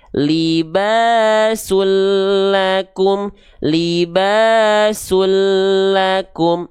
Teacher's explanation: Ya, maka ketika kita baca libasul lakum, jadi bunyi an ini dileburkan ke bunyi al, dileburkan ke bunyi lamnya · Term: idgham bila gunnah